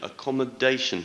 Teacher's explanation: stress is on the 4th syllable